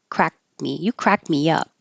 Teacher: crack me up because there's a a consonant after the K you won't hear the K at all